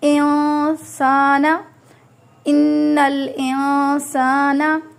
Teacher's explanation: ہے، تو یہاں پہ ہم اس طرح کا اخفا کریں گے، ناک میں آواز لے کے جائیں گے اور نون کی آواز کو آدھا چھپائیں گے اور آدھا نکالیں گے